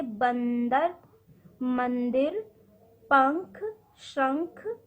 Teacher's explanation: अनुस्वार वाले वर्णों के उच्चारण में हवा नाक से बाहर आती है